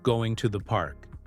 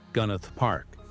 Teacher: The to the almost vanishes into a single smooth sound. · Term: reductions